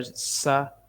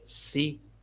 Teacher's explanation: سین کو ادا کرتے ہوئے سیٹی کی آواز آتی ہے